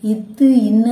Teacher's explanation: இத்து இன்னு அப்படிங்கிறது என்ன அப்படின்னு பார்த்தோம்னா நுனியும் மேல்வாய் பல்லோட அடியும். இத்து இன்னு சொல்லி பாத்தீங்கன்னா அந்த நாக்கு வந்து எங்க போய் தொடும், மேல்வாய் பல்லோட அடியை போய் வந்து தொடும்.